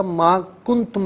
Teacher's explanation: کنتم نون ساکن پر اخفا کیا جائے گا